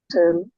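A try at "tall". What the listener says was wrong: টল টেল না, টল লম্বা,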